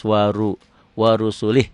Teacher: Wa ru'wanya pendek, ru'nya tebal karena barisnya ro-nya di atas